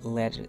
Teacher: If the T is in the middle of the word, the intonation changes the sound into a soft D